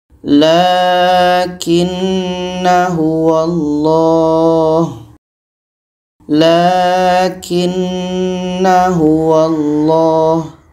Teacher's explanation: Seterusnya dalam ayat 38 dan 39 kita bertemu lagi dengan tanda sifir. Maka na ini tetap dibaca pendek karena sifir ketika wasal ketika bersambung itu tetap dibaca pendek. Jadi kita baca lakinna huwallah lakinna huwallah na dibaca pendek saja.